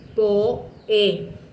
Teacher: la O y la E quedaron una al ladito de la otra, pero quedaron en sílabas diferentes. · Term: hiato